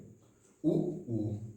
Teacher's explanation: जब ऊ बोलते हैं तो होंठ पूरा बाहर निकल आता है